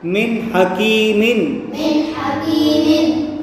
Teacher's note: نون ساکن کے بعد یہاں ہا آ رہا ہے تو یہاں بھی اظہار ہوگا، گنہ نہیں کریں گے۔